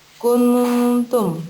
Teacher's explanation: maka dibaca samar-samar dengan dengung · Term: ikhfa hakiki